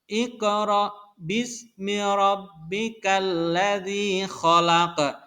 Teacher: jadi harus mantul itu adalah bacaan qalqalah